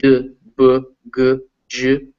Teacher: You can feel your throat, you're vibrating when you make those sounds. That's why they're called voiced sounds.